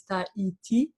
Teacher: our H, which is completely silent